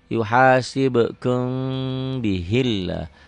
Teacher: Lafaz Allahnya dibaca tipis tarkik karena sebelum lafaz Allah baris bawah nih, baris di bawah ya.